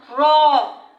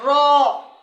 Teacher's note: কম্পন জাত, র, মানে র উচ্চারণ করতে গিয়ে দেখেন ভিতরে একটা কম্পন শুরু হয়